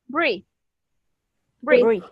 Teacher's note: This TH is voiced.